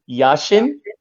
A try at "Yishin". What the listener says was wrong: Yeah, why yeah, there's an I.